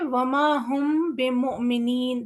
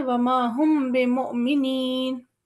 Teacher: जैसे वमा हुम बिमुमिनीन, जब हम मीम के फ़ौरन बाद बा पढ़ते हैं तो क्योंकि मीम और बा का प्रोनंसिएशन कुछ ऐसा है कि बा पढ़ने के लिए हमें मीम को गुज़ारना पड़ता है, हम उस पे ठहर नहीं सकते। तो हम उसे तेज़ी के साथ या हम उसे गुन्ना करते हुए या छुपाते हुए आगे बढ़ जाएँगे, जैसे वमा हुम बिमुमिनीन। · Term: इख़्फ़ाए शफ़वी